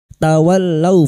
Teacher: fathah bertemu sukun kita lunakkan huruf lin